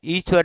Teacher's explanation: तालव्य मतलब जो तालु से बोले जाएंगे, जैसे आपकी दोनों ई हैं, जीभ के तालु के पास जाने से उच्चारित होते हैं। जीभ जब हमारे तालु के पास जाएगी तो ई शब्द जो है, वो ई वर्ण जो है वो उच्चारित होता है, ईश्वर जो है वो उच्चारित होता है।